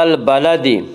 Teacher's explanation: وهذا البلد الف لام اگر حروف قمری کے شروع میں ہوں تو صرف لام پڑھا جائے گا، الف کو نہ پڑھیں گے۔ با یا حروف قمری میں سے ہے، با سے پہلے الف اور لام آ رہے ہیں اس لیے صرف لام کو پڑھا جائے گا، الف کو نہ پڑھیں گے۔